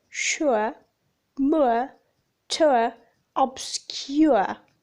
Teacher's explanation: the glide begins in a position for /ʊ/ moving forwards and down towards /ə/ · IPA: /ʊə/